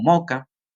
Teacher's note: aquí se puede notar una aspiración o incluso una elisión de la s en determinados contextos fonéticos por ejemplo la palabra mosca puede ser pronunciada como Moca en